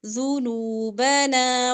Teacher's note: ذال کے اوپر پیش ہے نون پیش واو مدہ لمبا کریں گے